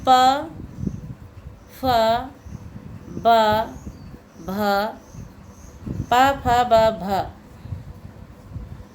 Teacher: तो इनका उच्चारण स्थान है ओष्ठ। ओष्ठ के बिना हम इनको नहीं बोल सकते।